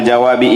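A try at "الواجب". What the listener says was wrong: Wajib atau jawab? Bukan jawab.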